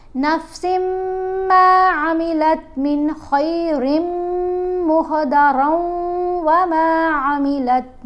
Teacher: جیسے یہاں نفسن میں جو نون ہے تنوین کا وہ نہیں اب پڑھا جائے گا کیونکہ ادغام ہوگا نا سین اور میم کا، تو غنہ کرتے ہوئے.